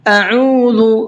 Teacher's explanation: حمزہ منہ سے نکلتا ہے اور عین حلق سے نکلتا ہے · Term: حمزہ اور عین